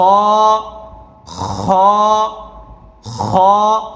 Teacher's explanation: হলকের শেষ ভাগ, গলার শেষ ভাগ হইতে খ